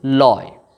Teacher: লয় বলার পরে আমরা কিন্তু আর টেনে লম্বা করে পড়তে পারছি না, আটকে যাচ্ছে, এই কারণে এটিকে আমরা বলছি বদ্যাক্ষর।